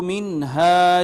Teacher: نون ساکن بعد میں حرف اظہار ہا ہے لہٰذا نون پہ اظہار ہوگا